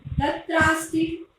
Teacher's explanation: ये दीर्घ रूप हो रहा है। देखो आ दीर्घ हो गया, जो देर तक बोला जाए उसे दीर्घ बोलते हैं, तो दीर्घ रूप हो गया तत्रास्ति।